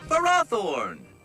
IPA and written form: fəˈrɒˌθɔrn (Ferrothorn)